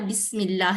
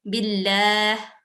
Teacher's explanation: لام مشدد سے پہلے اگر کسرہ ہوگا تو بھی یہ لام جو ہے یہ باریک اور ترقیق میں پڑھا جائے گا، نرم آواز میں پڑھا جائے گا